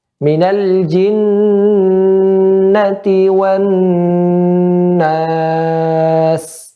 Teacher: ketika mengucapkan nun atau mim yang bertasydid memanjangkan gunnah pada keduanya. Ya, memanjangkan gunnah pada keduanya.